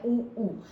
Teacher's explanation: जब हम बोल रहे हैं तो देखिए होठों का आपके गोल गोल घूम रहा है